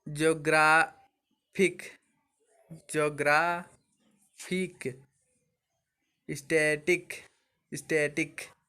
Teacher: stress the second टू last syllable of word that and in इक